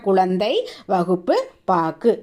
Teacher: அந்த பாக்குங்கிறது பார்த்தீங்கன்னா அரை மாத்திரை தான் ஒலிக்கும் அவ்வாறு குறைந்து ஒலிக்கும் உகரம் குற்றியல் உகரம் ஓகேங்களா இப்ப என்ன சொல்றாங்க அப்படின்னா